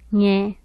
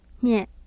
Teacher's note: Mid-low front nasalized unrounded